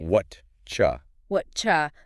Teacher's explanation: The words do and you mash together and turn into a cha sound.